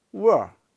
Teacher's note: at the end of a word we don't generally pronounce the full R